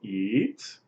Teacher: The rising tone means potential, able to eat.